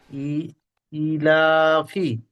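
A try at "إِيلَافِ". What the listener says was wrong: না, ইটা টান ছেড়ে যাচ্ছে জি, ইলাফি।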